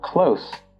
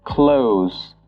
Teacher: If you're using the adjective, you'd pronounce it as close. So the O would be short, and you pronounce the S as an S.